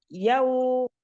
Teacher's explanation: ada wawu sukun sebelumnya bertemu dengan berharokat fathah menjadi harfulin dibaca lembut